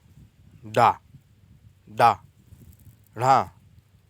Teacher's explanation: उत्क्षिप्त व्यंजन जिनके उच्चारण में जीभ पहले ऊपर उठकर मूर्धा का स्पर्श करे और फिर झटके के साथ नीचे आए।